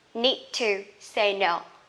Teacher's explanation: I need, okay, D and T together, you just need to pronounce the second consonant, T.